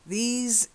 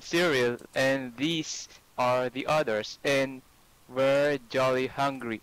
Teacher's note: These is long E. And a z, sort of vibrating sound. These, z, not these, these.